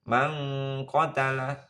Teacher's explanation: dibaca ikhfa berdengung, ya, samar dengung. Man qatala nun bertemu dengan qaf.